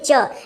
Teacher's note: और च को तालव्य क्यों कहा गया, आपकी जो जिह्वा है, जो जीभ है वो आपके तालू से जाके टच होगी